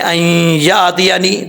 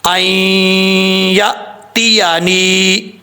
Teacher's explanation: حمزہ ساکن ہے تو اس کو جھٹکا دے کے پڑھنا ہے،